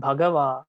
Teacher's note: first and last syllables are heavy